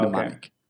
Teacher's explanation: you can kind of forget that first M in the word mnemonic. It starts with an N in pronunciation.